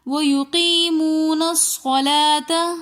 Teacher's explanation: صلاۃ میں لام کے اوپر کھڑا زبر آ رہا ہے تو اس لیے ہم نے صلاۃ لام کو 1 الف کی مقدار کھینچ کر پڑھا۔